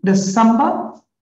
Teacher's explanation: the second syllable is the prominent one, meaning it is pronounced loudly